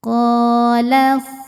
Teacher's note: Qala hukumnya mad tabi'i zahiri, sebab ada alif yang didahului baris fathah. Cara bacanya dipanjangkan 2 harokat. Qala. Nah, ini alifnya atau hamzah wasolnya tidak perlu dibaca ya, kita lewatin, lamnya pendek.